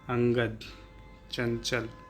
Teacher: ठीक है, तो अब इसमें अनुस्वार क्या होता है, इनका उच्चारण नाक से होता है, इनके उच्चारण करने में नाक से अधिक तथा मुख से कम सांस ली जाती है